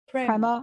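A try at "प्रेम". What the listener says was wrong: No, not prema. The E is an A, is right. An A sound.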